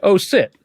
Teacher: sometimes in the gujarati language and a few other indian languages the sh sound is sometimes switched with an s sound